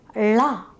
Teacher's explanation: For the production of the sound, the tip of the tongue curls back and touches the palate, closing the air passage. When the air stream is released, it flows out through the sides of the tongue.